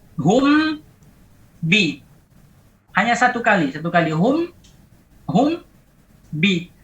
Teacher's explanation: Hanya satu kali hum bi. Bi hanya meneruskan gerakan dari mim yang terkatub. Sautuhu zahir. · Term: ikhfa